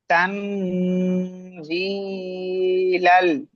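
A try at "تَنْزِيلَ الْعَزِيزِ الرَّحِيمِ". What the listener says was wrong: আপনি কিন্তু প্রথমে এখানে পড়েছিলেন তানজিল আল, এইভাবে পড়ে চলে গিয়েছেন, এখানে কিন্তু গুণনা আপনি করেননি।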